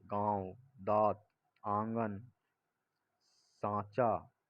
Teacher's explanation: अनुशासिक, ऊपर चंद्र बिंदु। ऐसे स्वरों का उच्चारण नाक और मुंह से होता है और उच्चारण में लघुता रहती है, जैसे गांव, दांत, आंगन, सांचा इत्यादि।